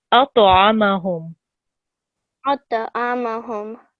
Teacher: this ta here is a thick letter, and I think you did pronounce it thick, but it needs to have a jerking sound as well.